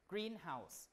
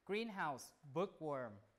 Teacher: when you have a compound word, the stress pattern is like the primary stress goes on the first syllable, green, greenhouse, rather than greenhouse, okay?